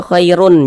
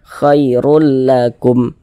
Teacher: lam huruf am bila ghunah maka hukumnya am bila ghunah maka cara membacanya dengan cara memasukkan kemudian tidak disertai dengan gunah tidak disertai dengan ghunah tidak didengungkan yang dimasukkan tu bunyi tanwinnya